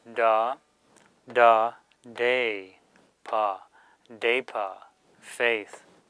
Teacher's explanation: suffix da and sa will change the inherent ah sound to a, as in the English word day